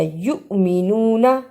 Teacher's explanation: یؤمنون حمزہ لگی تھی اس پہ چھوٹا سا جھٹکا دیا